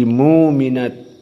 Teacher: maka dua qura ini membaca dengan penggantian Hamzah dengan wau